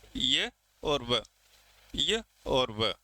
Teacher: उच्चारण अवरोध की दृष्टि से स्वर और व्यंजन के बीच में स्थित है। उच्चारण करते समय न तो ये पूरे स्वर लगते हैं न पूरे व्यंजन लगते हैं, बीच की कैटेगरी के ये हैं, ये और वह। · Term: अर्धस्वर